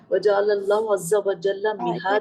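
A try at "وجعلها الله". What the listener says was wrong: جعل اللہ نہیں ہے، دوبارہ دیکھیں۔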